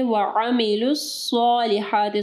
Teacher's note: صاد کو جو ہے ہیوی پڑھنا ہے اور ہا کو جو ہے واضح پڑھنا ہے